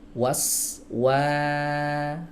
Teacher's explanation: dua bibir yang dimajukan maka startnya dari sana dari maju sebelum membaca fathah itu Bibir udah maju duluan tapi hati-hati jangan Wah jangan jangan tebal paham teman-teman ya Begitu